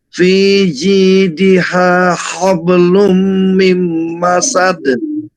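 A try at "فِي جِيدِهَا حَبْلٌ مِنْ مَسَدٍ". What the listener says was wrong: Fiji, jinya tidak boleh ngos. Fiji diha hablum min masad.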